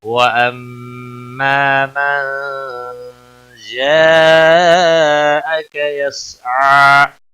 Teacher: نون ساکن کے بعد حروف اکفا کا جیم آیا ہے, اخفا حقیقی ہوگا, غنہ کے ساتھ پڑھیں گے. یہاں پر بڑی مد ہے, مد متصل 5 الف کے برابر کھینچ کر پڑھیں گے, کا کو کھینچنا نہیں. · وَأَمَّا میم مشدد پر غنہ ہوگا, الف مدہ ہے ایک الف کے برابر کھینچ کر پڑھیں گے.